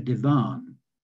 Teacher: we called our large chair a divan with a slight stress on the last syllable